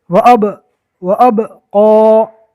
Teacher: پہلے والے حرف سے ملائیں گے اور جس طرح با کو ادا کریں گے ہونٹوں سے، فوراً ادا کرنے کے بعد ہونٹوں کو چھوڑ دیں گے۔ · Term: کلکلا